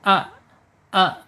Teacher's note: Asyidah yaitu tertahannya suara ketika alif ini sukun.